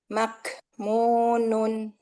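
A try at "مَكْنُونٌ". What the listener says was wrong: Kebanyakan itu. Dikit aja, renggangnya dikit. Maknunun. Jadi sedikit aja renggangnya ya.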